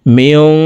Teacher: মিম নুন জির মেয়ং, ইকফা গুন্না, নুন সাকিনের পরে ইকফার হরফ জিম আসছে, এই কারণে এই নুন সাকিনকে নাকের ভিতরে লুকাইয়া গুন্নার সহিত পড়ব